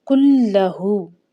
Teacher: نون ساکنہ کو چھپاتے ہوئے کاف کو ڈائریکٹ ہم نے لام کے ساتھ ملا کر پڑھنا ہے۔ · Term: حروف یرملون کا قاعدہ